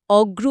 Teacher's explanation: অগুরুতে গ আর র আলাদা ছিল, অগ্রুতে গ প্লাস র যুক্ত হয়ে গেল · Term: মধ্য স্বরলোপ